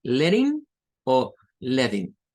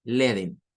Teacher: en inglés norteamericano estas dobles T suenan como una especie de R o una especie de D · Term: flap T